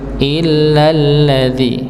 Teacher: Jadi langsung, tapi dengan hentakan dikarenakan dia bertasydid illalladzi nggih, dengan hentakan dikarenakan dia lamnya bertasydid nggih, untuk mengetahui istilahnya memperjelas bahwa dia bertasydid, masuk hamzahnya masuk pada huruf lam.